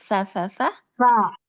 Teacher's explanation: Ujung lidahnya agak keluar sedikit menyentuh gigi atasnya.